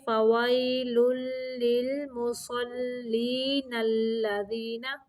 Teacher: واو کی ادائیگی کے وقت ہونٹوں کو گول کرنا ہے۔ فویل لام مشدد ہے، اس لیے پچھلے لام کے ساتھ تھوڑی دیر ملائیں گے